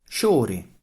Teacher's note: Fl in Latin became fi in Italian, but became sci in Sicilian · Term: regular sound correspondence